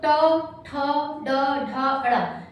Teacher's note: हमारी जीभ मुख के ऊपर वाले भाग को टच कर रही है, यानी मूर्धा को टच कर रही है